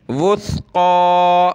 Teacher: سا پیش وث، قاف کھڑا زبر قا موٹا کریں گے، اور قاف پر کھڑا زبر ہے تو ایک الف کی لمٹ میں ہم نے اوپر کھینچنا ہے